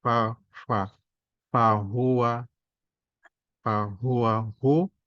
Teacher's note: agak monyong bulat karena dhammah ya. Tiap dhammah ya, rata-rata dimonyongkan mulutnya.